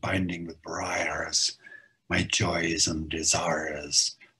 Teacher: one suspects that Blake's own pronunciation in this period was much closer to a modern Irish pronunciation, where you'd hear the R's coming through there. So as well as those strong plosives and binding with briars, get this R sound binding with briars, my joys and desires.